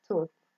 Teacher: that is voiceless, lingual dental, fricative, example tooth.